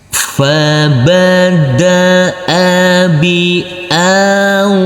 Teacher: huruf alif yang berfathah a ini bertemu dengan huruf wawu sukun maka kita lembutkan karena ini adalah bacaan layin.